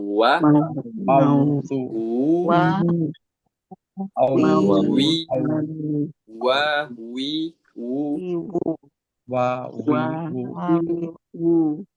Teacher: yang dibaca dengan bibir monyong pada semua harokat.